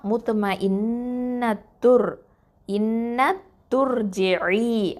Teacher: துர் ஜெயி, அந்த த தொம்மா ரா சுக்குனோட இணைஞ்சிரும். அப்போது அந்த இடத்துல இருக்கக்கூடிய ஹம்சத்துல் வசலை நம்ம உச்சரிக்க மாட்டோம்.